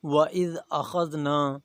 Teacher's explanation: اخذنا خا موٹا حروف ہے اور آگے ذال جو ہے یہ نرم حروف ہے۔ وَإِذْ أَخَذْنَا، نون کے اوپر الف مدہ ہے اس لیے اسے تھوڑا سا کھینچا جائے گا۔